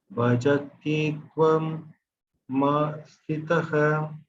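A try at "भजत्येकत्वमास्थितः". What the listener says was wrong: Bhajatye, and then the ka by itself. Bhajatye ka tvama sthitah. Ka.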